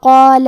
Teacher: کلمت قال میں قاف کو اور مد الف کو دونوں کو بھاری آواز میں ادا کریں گے